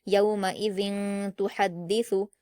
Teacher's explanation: یومئی، ذال پر تنوین ہے، 2 زیر کی تنوین، اور اس کے بعد تا آیا ہے، تو تنوین کے بعد جب حروف اخفا میں سے کوئی حرف آتا ہے تو تنوین کی آواز کو ناک میں چھپا کر غنہ کے ساتھ پڑھا جاتا ہے